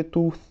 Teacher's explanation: Зажать язык между зубов и прошипеть ф чтобы получить глухой звук как в слове tooth